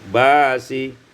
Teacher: ibdalul hamzati alifan ditukar hamzah alif menjadi basi.